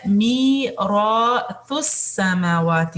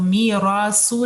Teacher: تا نرمی سے ادا ہوگا، سین کا مخرج اپنی جگہ سے ادا ہوگا، مکس نہیں کرنا اس کو. میراثو نہیں ہے، ٹھیک ہے.